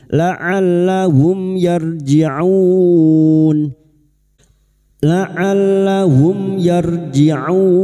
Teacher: mim sukun bertemu ya idhar syafawi mim sukun dibaca jelas tanpa mendengung